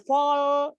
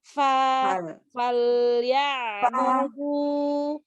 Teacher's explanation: Fa jangan ditebalkan fol, enggak, tapi fal ya budu. Jangan fo walaupun dia fathah fal ya budu.